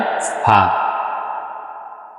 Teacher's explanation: নিচের ঠোঁটের পেট সামনের উপরের দুই দাঁতের আগার সঙ্গে লাগাইয়া